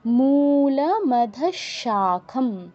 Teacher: বিসর্গর জায়গায় তালব্য স-এর মতো উচ্চারণ হবে, তালব্য স হসন্তর মতো